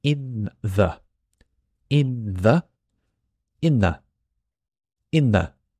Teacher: the th almost disappears The N is the strongest sound